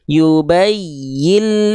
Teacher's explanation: lanjutkan maka di sini jangan sampai kita baca yubayyin Lana tapi bunyi Nun sukunnya dileburkan keelam tuh makanya ada tanda tasdid ya yubayillana ketika dileburkan tanpa dengung jadi enggak perlu ditahan enggak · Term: idgom Bil guna